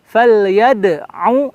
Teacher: Yad pantulan qalqalah, huruf qalqalah, dal terasa, langsung bertemu ain.